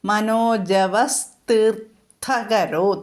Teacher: അപ്പോൾ നമ്മൾ കൂട്ടിച്ചേർക്കുന്നത് സ് എന്നാണ്. സ് വിസർഗസ്ഥാനത്ത് സ് വരുന്നു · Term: വിസർഗസന്ധികളൊക്കെ